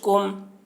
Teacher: میم ساکن کے بعد میم آ رہا ہے اس لیے میم کو میم سے ملا کر پڑھیں گے، اس کو ادغام شفوی کہتے ہیں.